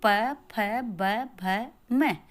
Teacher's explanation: जो ध्वनियाँ दोनों होठों के स्पर्श से उत्पन्न होती हैं उन्हें ओष्ठ ध्वनियाँ कहते हैं।